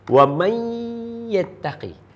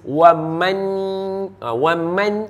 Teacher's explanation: nak jadi nah okey Wam yattaqi so wamai ni dia idgham bila dia idgham Dia kena masuk terus Nun tak mahu dengar H sebab tu dia tak akan jadi waman waman tak mahu